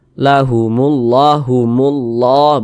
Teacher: ada lafaz Allah sebelumnya ada huruf yang memiliki tanda baca dah maka lafaz Allah dibaca tebal dibaca tabkhim